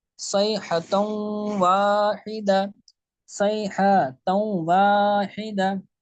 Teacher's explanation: نون تنوین کے بعد واو حروف یرملون میں سے آ رہا ہے، تو اس میں کیا ہوگا؟ اس میں ادغام بھی ہوگا اور اس میں گننا بھی ہوگا